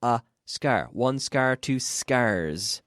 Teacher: There's no vowel sound before the S.